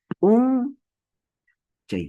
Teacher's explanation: En el caso, por ejemplo, de Punchay, la mayor fuerza de voz es un, y bajamos.